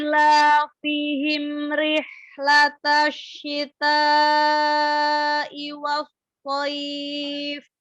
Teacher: huruf h-nya lebih dialirkan lagi kan dia zamannya lebih dari yang lain ya karena dia ada rokhwa ada hamas